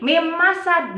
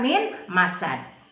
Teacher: karena nun sukun bertemu dengan huruf idgham biguna yaitu mim, maka dibacanya dimasukkan. Jadi mim masad bukan min masad.